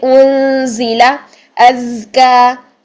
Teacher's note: زا میں سیٹی بھی ہونی چاہیے اور آواز بھی جاری ہونی چاہیے